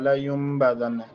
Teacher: لینبذن کې نون ساکن دی، وروسته با راغلی اقلاب لینبذن نون بیا دلته مشدد دی غنه کېږي.